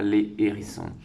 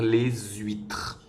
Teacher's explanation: étoile ici s'il ya une petite étoile cela veut dire que c'est un h aspiré avec lequel on ne peut pas faire de liaison